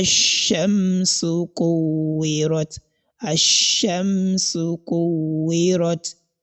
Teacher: You indicate the articulation point of letter mim, but there is no any nasalization in this case. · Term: labial manifestation